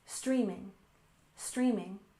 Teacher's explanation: And finally, we have streaming with stress on the first syllable, streaming, streaming.